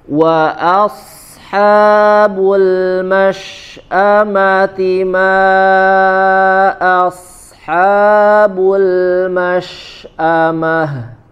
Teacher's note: Naam ya, di huruf shin juga karena dia sifat hams ya, memiliki sifat hams ya, hams kemudian juga dia rokhawah ya, maka perhatikan tidak ada jeda ketika kita membaca huruf shinnya, jangan mash a ma mash a, jangan ada jeda ketika setelah membaca huruf shin sukun ya, mengalir ya. · huruf ta marbutoh di akhir ayat ya, dibaca dengan huruf ha ya, dari pangkal tenggorokan. Kemudian huruf ha lebih dijelaskan, wa asha ha, dari tenggorokan bagian tengah ya.